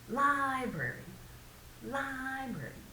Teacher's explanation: again we're pushing the first syllable